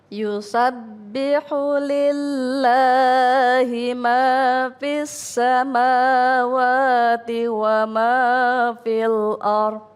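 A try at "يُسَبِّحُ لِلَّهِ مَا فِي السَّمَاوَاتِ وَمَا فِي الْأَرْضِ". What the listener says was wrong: Yusabbihu lillahi. Jangan terlalu panjang. Yusabbihu lillahi. Kepanjangan. Dia cuma 2 ketukan. Yusabbihu lillahi ma fis samawati wa ma fil ardh. Ya, jadi 2 ya.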